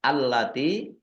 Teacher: bertemu dengan huruf wau bacaan izhar syafawi dibaca jelas kemudian allati lamnya dibaca dobel ada tasdidnya